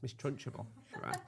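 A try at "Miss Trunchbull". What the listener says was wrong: Trunch ball. You put in a third syllable in that now. You've always done it, and it's always annoyed me. Trunch ball. No, Trunch ball. It's not Miss Trunchable. Miss Trunchball.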